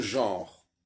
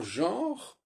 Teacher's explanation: dans genre, il y a une diphtongue, le fameux EN français qu'on trouve dans aucune autre langue